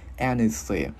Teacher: mình đưa lưỡi qua giữa hai răng mình thổi hơi